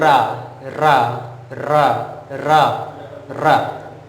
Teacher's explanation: इसका मतलब क्या है कि इसके उच्चारण में, जैसे आप कह रहे हो रा, रा, रा, रा, रा, आप देखिए जीभ में कितना कंपन है, जीभ में बहुत ही ज़्यादा कंपन है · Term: लुंठित और प्रकंपित